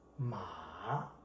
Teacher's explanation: The third tone is falling and rising tone.